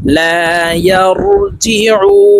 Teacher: এখানে উ তিন আলিফ টেনে নুনকে সাকিন করতে হবে, কারণ মধ্যে আরজি মদের হরফের বামের হরফে ওয়াকফ হইলে তিন আলিফ টেনিয়া পড়িতে হয়, এই মদকে মধ্যে আরজি বলা হয়।